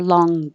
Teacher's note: your tongue goes very high in the back and the air goes through your nose, but you don't release it with the burst of air.